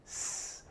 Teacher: if you put your hand to your throat here and say s, you will not feel a vibration. This is an unvoiced sound, no voice.